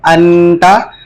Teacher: تا حروف حلقی میں سے نہیں ہے، اس لیے نون ساکن میں غنہ ہوگا، تو غنہ کے ساتھ پڑھیں گے انتا، وقف میں انت۔